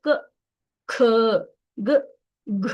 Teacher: ಇಲ್ಲ ಕೇವಲ ಕಂಠದಿಂದ ಬರ್ತಾ ಇದೆ ಕ ಖ ಗ ಘ ಹಾಗಾಗಿ ಇದಕ್ಕೆ ಕ ವರ್ಗ ಕಂಠದಿಂದ ಉತ್ಪನ್ನ ಆಗುವಂತಹ ಅಕ್ಷರಗಳು